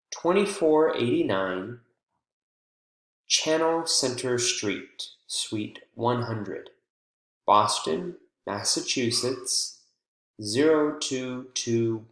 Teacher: we pause between the number and the street the city and the state and the zip code and any apartment number sweep number we would include as well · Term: thought groups